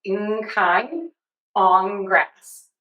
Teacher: N is going to keep its nasality with air moving out of the nose. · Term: assimilation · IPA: /ŋ/